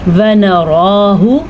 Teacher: را کے اوپر کھڑی زبر ہے تو را کو پر پڑھیں گے